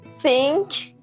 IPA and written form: θɪŋk (सोचें)